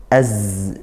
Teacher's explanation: Nah, kemudian keluarlah dari situ desisan huruf zai, maka ujung lidah, makhrajnya ujung lidah bertemu gigi seri yang bawah ya, gigi yang bawah, tapi dia juga rapat ini dua giginya.